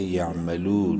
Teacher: واو مدہ ہے، لام کو ایک الف برابر لمبا کریں گے، یعملو، نون زبر نا، یعملون، وقفاً یعملون۔